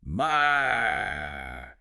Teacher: It's a sharp, rapid drop from the highest point in your range straight down to the lowest. So it should feel forceful. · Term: fourth tone